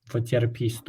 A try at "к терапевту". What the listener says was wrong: К терапевту. К терапевту. There's no S. There's no S in Russian.